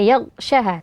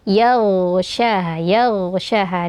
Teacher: Huruf ghain ini dibaca tebal karena didahului oleh huruf fathah, *yag*, dan kemudian huruf ghain ini memiliki atribut jahr dan rakhawah . Ya, jadi tidak ada aliran napas tetapi suara yang mengalir, jadi jangan hanya membacanya sebagai *yagsyaha*.